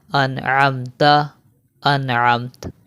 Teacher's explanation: یہاں پر دیکھیں نون ساکن ہے اور نون ساکن کے بعد حرف حلقی میں سے عین آ گیا ہے، تو یہاں پر ہم غنہ نہیں کریں گے